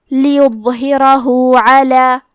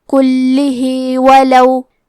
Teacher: یہاں مد صلہ صغرا کو ظاہر کریں گے